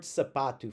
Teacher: We're gonna have an open A sound. That second A that's that's in bold here in my example um is going to be like the it's not quite like bad, but it's as close as I can get it.